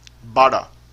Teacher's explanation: em vez de ser a ponta da língua apontando para frente na boca, a ponta da língua se volta para o palato, se volta para o alto da boca, para o centro da boca. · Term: D retroflexo